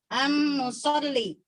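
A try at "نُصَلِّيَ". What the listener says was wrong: Kalau baca komplit Bu, jangan dimati-matiin. Ujung-ujungnya jangan di-shuffle atuh.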